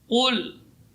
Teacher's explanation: tidak boleh keluar udara. Udaranya tertahan karena dia syiddah